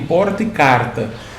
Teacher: Um exemplo de variação fonética muito comum é o R retroflexo, usado no dialeto caipira como em porta e carta